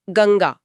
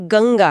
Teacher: हाँ, क्योंकि अनुस्वार के ठीक बाद ग आ रहा है जो क वर्ग का सदस्य है। उच्चारण की सहजता के लिए नासिका ध्वनि भी उसी कंठ स्थान पर चली जाती है और वह बिंदी स्वतः ही ng में बदल जाती है। यही कारण है कि बोलते समय हमारा प्रवाह बना रहता है। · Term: ng की ध्वनि